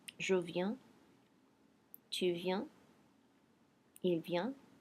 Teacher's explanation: the S and T, S's and T are silent, and my N is making me have a nasal